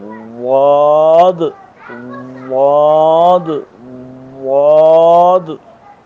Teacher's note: اب ضاد جو ہے یہ لام کے مخرج کے قریب سے ادا ہو رہی ہے، اور اس کے ادا کرنے میں استطالت یعنی اس کو ذرا دیر سے ادا کیا جاتا ہے